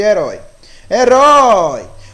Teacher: O O, ele vai lá no alto e aí ele decresce, diminui quando chega no I. Por isso que é um encontro, né, um ditongo decrescente.